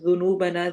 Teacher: نو کو لمبا کرنا ہے